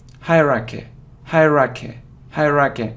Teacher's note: so you see that the main stress is on the first syllable